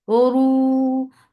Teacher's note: ra is heavy. For the circle lips, make it 2 counts long.